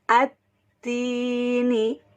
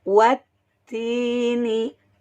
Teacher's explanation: Ada huruf lam di sini, tapi lamnya tidak terbaca atau diidghamkan, dimasukkan langsung ke dalam huruf ta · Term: alif lam syamsiyah